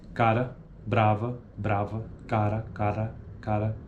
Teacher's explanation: O articulador ativo toca rapidamente o articulador passivo, ocorrendo uma rápida obstrução de passagem da corrente de ar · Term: TEP